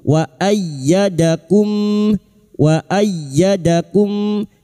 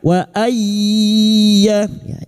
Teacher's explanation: Yang bertasdid hanya masuk tanpa ditahan lama-lama tanpa mendengung.